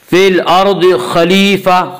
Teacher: خا کو پر پڑھیں گے، خا بھی حروف مستعلیہ میں سے ہے۔ حروف مستعلیہ 7 ہیں جن کا مجموعہ خصہ ضغط قز ہے جو ہمیشہ ہر حال میں پر پڑھے جاتے ہیں۔